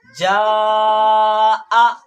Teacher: مدہ کے بعد حمزہ آ گیا تو وہاں مد ہوگا، اور یہ جو مد ہے یہ مد متصل ہے یعنی بڑا مد، کیونکہ حرف مد کے بعد حمزہ اسی کلمہ میں ہے ، یعنی ایک ہی کلمہ میں ہے۔ یہ جیم الف زبر